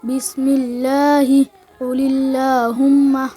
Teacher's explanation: د لفظ قاعده نمبر 2 هر کله چې د لفظ الله او اللهم د لام نه مخکې زیر راشي نو په دغه لفظ الله او اللهم والا لام به نری ویل کېږي